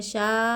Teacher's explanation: मद्दे मुत्तसिल को चार अलिफ के मकदर खींचेंगे